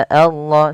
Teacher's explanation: Cara membacanya samarkan suara nunnya kepada huruf sya. Insyaallah sambil ditahan dua harakat. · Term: ikhfa hakiki